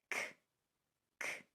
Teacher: So the hard sounds, they sound hard because there is an abrupt kick against the back of your throat with the tongue. For the C sound, it sounds just like a K. It's voiceless, only air.